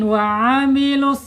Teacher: ain ya ada di tengah-tengah tenggorokan secara makhraj ya. Kemudian secara sifat ada di tawas ya.